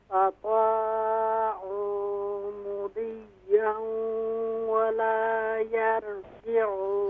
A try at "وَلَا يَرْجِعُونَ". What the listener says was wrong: हाँ, यर नहीं, यहाँ रॉ को हम फुल माउथ करेंगे, वला यरजिऊन।